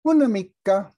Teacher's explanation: se encadena el sonido una consonante con una vocal